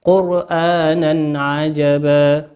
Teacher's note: وقول ربنا عز وجل: قرآنا عجبا، تنوين أتى بعده حرف الهمزة، والهمزة من حروف الإظهار، نظهرها كما هي